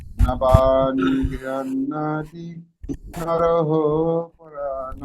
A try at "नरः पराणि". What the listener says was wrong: হো নেই, নর হো বলতে হবে না, নর।